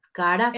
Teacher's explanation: hay mayor carga de voz en esta última sílaba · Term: palabra aguda